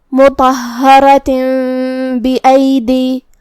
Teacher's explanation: इक़लाब का माना है बदल देना, तो हम ये तनवीन को मीम में बदल के गुन्ना के साथ ये हुक्म को अदा करेंगे